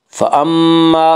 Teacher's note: ميم مشدد غنة هوگا غنة کی مقدار ایک الف ہے